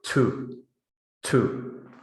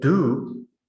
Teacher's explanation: you should feel a burst of air on your hand right that's aspiration · when you say do you shouldn't feel a burst of air with the initial consonant